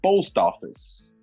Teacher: Porque, por exemplo, nesse caso aqui, post office. Post termina em uma consoante e office termina em uma vogal, começa em uma vogal. Então, quando isso acontece em inglês, a gente tem um encontro consonantal vocálico e as duas palavras ficam meio que juntas. Então a gente fala assim, post office.